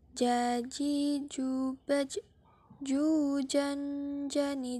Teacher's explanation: huruf ini dilafalkan dengan menyentuhkan Tengah lidah ke daerah langit-langit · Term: huruf ja, huruf Ja